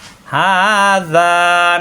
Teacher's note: হা মুখ খোলা থাকবে একালিপ টান, হাযা নরম করে একালিপ টান।